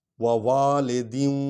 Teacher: یہاں نون غنہ کر رہے ہیں کہ آگے وا پر شد ہے